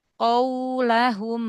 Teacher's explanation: Linnya dilembutkan lagi jangan dinaber. Qaulahum wawnya memang sempurna monyong ya. Tapi jangan dinaber.